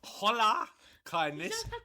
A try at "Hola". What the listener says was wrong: You're pronouncing the H too much. Yeah, but it's a soft H.